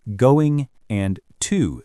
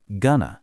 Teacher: instead of practicing the words going and to separately, notice how, in fast speech, they connect and become gonna.